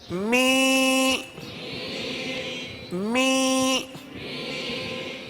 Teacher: دیکھیں ناک میں آواز لے جائیں گے، زیر کی آواز نکالیں گے